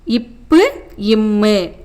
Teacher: மேல் இதழும் கீழ் இதழும் பொருந்துவதால் பிறக்கும் மெய்யெழுத்துக்கள்